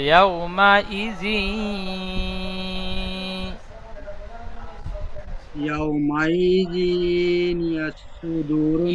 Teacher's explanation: ইয়াউমাইযি, জালের নিচে দুজে তানবিন, তানবিনের পরে ইকার, ইয়ার মালুনের 6টি অক্ষরের মধ্যে ইয়া এসেছে, ইদগামে নাকিস হবে, একালি পরিমাণে গুণনা করে পড়তে হবে